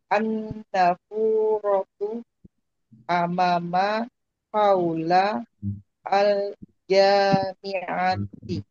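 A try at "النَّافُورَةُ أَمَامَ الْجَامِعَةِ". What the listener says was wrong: Oke, ini masih ada yang kurang pas rasanya panjang pendeknya.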